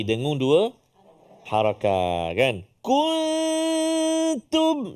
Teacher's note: Nun mati bertemu dengan ta. Apa nama dia? Ikhfa hakiki. Dengung 2 harakat kan.